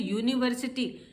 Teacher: हम आ ई उ नहीं बोलते, उसमें हम पूरा य बोलते हैं यूनिवर्सिटी, क्योंकि उसमें वॉवल की साउंड नहीं है, मात्राओं की साउंड नहीं, इसलिए उसके आगे हम ए लगाते हैं.